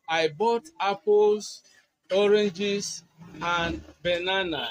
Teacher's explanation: notice how the intonation rises on apples, oranges, but falls on bananas.